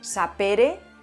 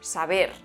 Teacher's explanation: en latín las consonantes eran sordas y en el paso al español al estar rodeadas de vocales que son Sonoras pues se han sonorizado